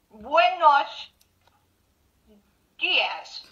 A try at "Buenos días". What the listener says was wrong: This is good.